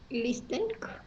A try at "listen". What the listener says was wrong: Muy bien, pero te regalo la T. La T no suena. Listen, ¿listo?